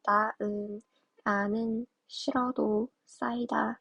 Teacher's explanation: 히읗 뒤에 모음으로 시작되는 애들이 결합될 때는 히읗을 발음하지 않는다